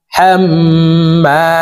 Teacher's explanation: তো এখানে দেখুন হরকতের বামে মিমের উপরে তাসদিদ আছে, এই কারণে এই হা তাসদিদওয়ালা মিমের সাথে 3 সেকেন্ড পরিমাণ গুন্নাহ করে ধরে রেখে পড়তে হবে। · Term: ওয়াজিব গুন্না